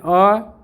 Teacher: आधा मुंह खुला होता है, वह अर्ध विवृत कहलाता है। जैसे अ बोल के देखिए, अ आधा खुल रहा है, औ आधा मुंह खुल रहा है तो ये क्या है?